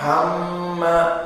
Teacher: Karena pas tadi dibaca makhrajnya makhraj jauf, makhraj mudud. Maka yang benar makhrajnya dari khayshum, sehingga hamma di sini hidung. Maka inilah dari mim musyaddadah mempunyai hukum gunnah bimiqdar harakatain.